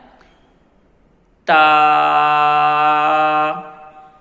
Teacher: آپ نے اپنی زبان کی نوک اس کو آپ نے اوپر والے دانتوں کی جڑوں کے ساتھ لگانا ہے۔ · اس کی ادائیگی میں آپ نے خیال رکھنا ہے کہ اس کی آواز کو آپ نے بھاری نہیں کرنا، موٹا نہیں کرنا